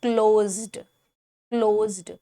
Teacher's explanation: the S sounds like vibrating Z, so the word would sound like closed